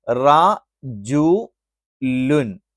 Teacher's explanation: തെൻവീൻ എന്ന് പറയുന്നത് ഉച്ചാരണത്തിൽ അതൊരു നൂൻ ആയിട്ടാണ് ഉച്ചരിക്കുന്നത്